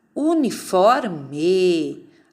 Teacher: Uniforme. A sílaba tônica é o for.